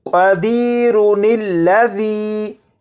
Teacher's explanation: ان دونوں الفاظ کے درمیان میں نون کا اضافہ کریں گے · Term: نون قطنی